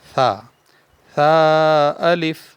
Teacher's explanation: یا الف ثا الف، ایک ہوتا ہے سیٹی والا، سا نہیں پڑھنا اس کو، سا بغیر سیٹی کے، زبان کی نوک اور دانتوں کے اندرونی کنارے سے یہ ادا ہوتا ہے